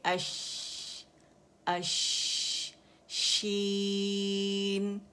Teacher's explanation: تو یہاں پہ جو آواز بنی ہوئی ہے، ہوا اس کو لے کر آتی ہے اور یہاں سے اس کے گزرنے کی جگہ یہاں آتی ہے اور منہ میں پھیل جاتی ہے، جس کی وجہ سے ہمیں شین کا شور یا شاورنگ ساؤنڈ جو ہے یہ ہمیں سنائی دیتی ہے. اور یہ جو گیپ ہوتا ہے یہ کم ہوتا ہے، ٹھیک ہے، کیونکہ ایک دوسرا لیٹر بھی یہاں سے ادا ہوتا ہے، ٹھیک ہے.